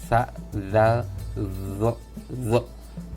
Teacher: Baik, dan yang makhraj yang kedua adalah apabila di makhraj sa, zal, dan zo. Sa, zal, dan zo ini ujung lidah bertemu di antara dua gigi seri atas dan bawah sa, zal, zo, zo.